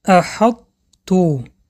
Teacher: صفت اطباق حرف طا می‌ایست ولی صفت قلقله آن باشد ناپدید می‌شود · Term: ادغام ناقص